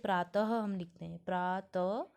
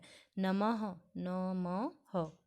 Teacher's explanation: विसर्ग का उच्चारण हल्के ह की भांति होता है।